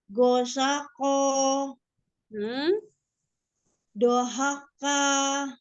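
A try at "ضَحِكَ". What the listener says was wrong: Ya, tapi huruf terakhirnya itu agak menabrak sedikit. Penyebabnya apa? Huruf keduanya kurang dibuka.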